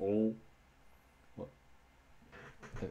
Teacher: that sort of dark L that's sort of like you would kind of hear in Slavic languages